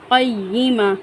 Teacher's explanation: گول تا کو ہم ہا ساکن کی مانند پڑھیں گے